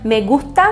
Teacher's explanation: me gusta tem esse S que às vezes é falado aspirado mas se tu falares me gusta normal não tem problema nenhum